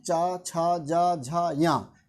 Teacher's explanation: ये किससे उच्चारित होते हैं, आपके तालु से।